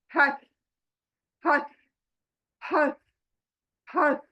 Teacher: बीच में हमारे centre of the throat, यानी गले के बीच में से निकलेगा।